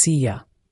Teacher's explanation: This is another great example of you reducing to ya. So, see you becomes see ya and later in American English, the t often becomes that soft d sound like later.